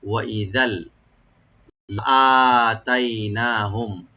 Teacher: ওয়া ই এরকম না, ওয়া ই জাল, জালের উপরে যে দুই জবর আছে তানবিন, তানবিনের পরে যেহেতু লাম আসছে এখানে, এখানে ইদগাম হবে কিন্তু গুন্না হবে না, উইদাউট গুন্না আমরা সংযোগ করে করব